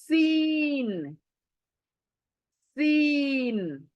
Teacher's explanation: है इसकी मखर कौन सी है सीन की इसकी मखर है दोनों दांत ऊपर के नीचे के करीब आएंगे और पीछे से हमारी जबान दोनों दांतों के बीच में सीटी देगी तब जा कर ये तीन आधा होगा ऊपर के दोनों दांत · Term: सीटी वाली आवाज